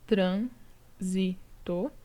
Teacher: proparoxítona que tem a antepenúltima sílaba tônica tá então aqui eu tenho três sílabas trânsito né e a